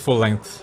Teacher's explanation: the tha sound in words like length and think, with the tip of the tongue touching behind the top front teeth.